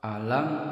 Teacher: dengan selain mim dan ba ini disebut dengan izhar syafawi jadi mim sukun nya dibaca jelas bibir rapat sempurna